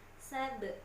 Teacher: Nah, perhatikan di situ ada ba sukun. Ba sukun hukumnya qalqalah, berarti harus dipantul